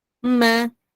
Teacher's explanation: nun Kenapa saya sebut mim ni bila kita sebut sahaja mim walaupun mim itu berbaris dia tetap ada ghunah